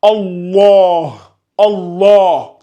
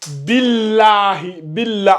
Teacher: On ne fait plus la règle de la lettre emphatique, mais on fait la règle de la lettre amincie.